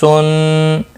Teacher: صفیریہ کا سین اور صاد، اس میں تیز سٹی کی طرح پڑھنا ہے، یہ موٹا بھی پڑھا جائے گا، یہ بھی صفیریہ ہے.